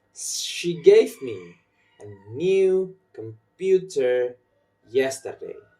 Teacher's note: You will probably notice that I put my stress in gave, new, computer, and yesterday.